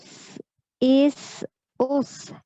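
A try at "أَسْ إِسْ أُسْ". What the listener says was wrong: A-nya jangan dipanjang. As. Jangan mantul. As is us.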